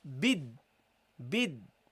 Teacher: we don't pronounce the lamb and we double the D okay so you go immediately from this to the D so